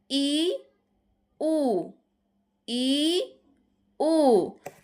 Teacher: ই উ ই উ যখন আমরা ই বলি তখন দেখো এইরকম হয়ে যাচ্ছে। ই যখন আমরা উ বলি তখন আমাদের ঠোঁট দুইটা গোল হয়ে যাচ্ছে।